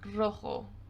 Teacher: The first sound is the roll, this very typical Spanish roll that they have.